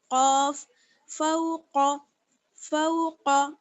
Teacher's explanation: قاف کا مخرج کیا ہے؟ اوپر کا نرم تالو اور زبان کی جڑ، زبان کی جڑ اور اوپر کا نرم والا تالو، قاف فوق، فوق.